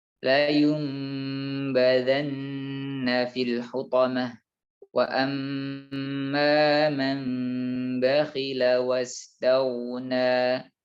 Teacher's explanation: diganti huruf nunnya menjadi huruf mim. Mim sukun dan tentu saja dengan gunnah yang dipanjangkan. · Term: iqlab